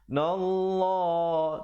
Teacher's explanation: dibacakan lafzul jalalah kali ini tebal